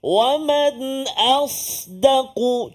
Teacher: itu sin tak terangkat lidah kita.